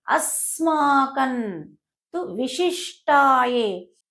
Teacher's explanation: అనేది తర్వాత వచ్చే అక్షరానికి అనుగుణంగా అనుస్వరం అనేది శబ్దం మారుతూ ఉంటుంది. కాబట్టి తర్వాత వచ్చే అక్షరము త వర్గానికి చెందింది కాబట్టి ముందుండేటువంటి అనుస్వరము అన్ అని పలుకుతుంది.